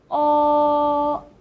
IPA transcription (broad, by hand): ō